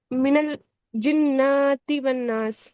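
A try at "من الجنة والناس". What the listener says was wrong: ہاں، یہاں پہ کیوں کھینچ رہی ہیں آپ؟ مجھے پتہ نہیں، آپ بتائیے مجھے کھینچنا ہے یا نہیں.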